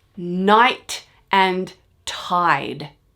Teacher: it's not a perfect match between the consonant at the end. The t and the d are not identical. So this is what's called family rhyme.